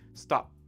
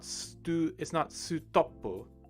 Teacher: We don't want that U sound at the end. We just want the P